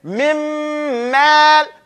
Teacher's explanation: we don't even hear the noon. It's completely eaten into the next letter. We say mim. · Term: complete idgham